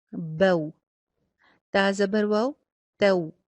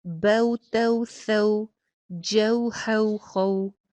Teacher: با زبر واو، بو، تا زبر واو، تو۔ زبر کی ادائیگی کے فوراً بعد ہونٹ میکسیمم گول ہو جائیں گے واو کے مخرج کے لیے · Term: واو لین